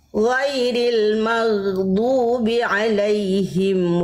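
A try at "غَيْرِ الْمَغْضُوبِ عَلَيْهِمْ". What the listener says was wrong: Bunda udah bagus tinggal dodnya kurang panjang sedikit mad lazimnya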